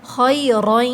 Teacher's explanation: خا میں خرخراہٹ پائی جائے گی